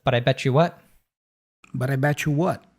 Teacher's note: oftentimes when we have a T plus a Y in American English, we change it. It morphs into a ch sound.